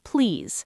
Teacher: The word please should have a clear Z sound at the end, not an S.